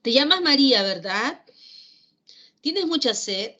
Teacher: esas preguntas directas de inflexión de voz final de tipo ascendente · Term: entonación ascendente